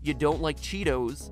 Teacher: that kind of flat even tone